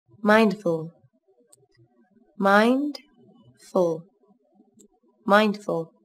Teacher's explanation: Từ này các bạn chú ý có 2 âm tiết, trọng âm rơi vào âm tiết đầu tiên. Nguyên âm đôi trong từ này là âm I.